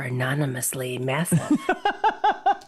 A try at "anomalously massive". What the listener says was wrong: It's anomalously massive. you added, Anomalously massive. Anomalously massive. You put too many syllables in it, it sounds like you're drunk, right?